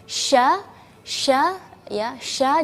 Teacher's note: jadi anginnya agak melebar karena memiliki huruf shin memiliki sifat tafasyi.